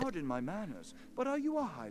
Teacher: He's like on the spectrum of like vocal fry.